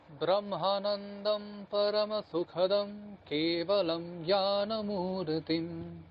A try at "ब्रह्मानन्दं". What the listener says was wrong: ব্রহ্মা আকারটাকে টানতে হবে, আবার বলুন।